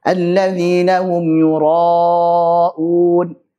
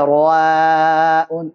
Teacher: ro-nya kan tebal, ro, maka alifnya ikut tebal. Jangan sampai ra'un, salah.